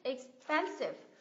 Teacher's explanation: cái âm thứ hai này mình nhấn